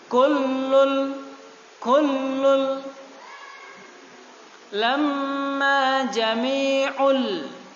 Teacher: dalam tajwid namanya idgham bila gunnah, idgham tanpa ada dengung.